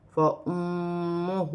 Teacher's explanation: اور یہاں پر میم مشدد ہے، میم مشدد میں غنہ کیا جائے گا